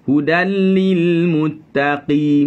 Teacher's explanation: ambil qi pada pangkal lidah, naik atas. Muttaqi, jangan muttaqi.